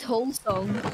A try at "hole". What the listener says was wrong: Could you please stop pronouncing the L in hole? Because it's making me very confused.